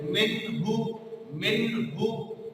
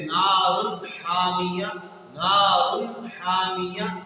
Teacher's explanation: मसलन मिन्हु, ये मीम के बाद नून आ रहा है जो नून साकिन है, और उसके बाद हा आ रहा है जो हुरूफ इजहार में से है। तो अब इस नून की आवाज को नून के मखरज से वाज़ेह निकाला जाएगा और गुन्ना नहीं किया जाएगा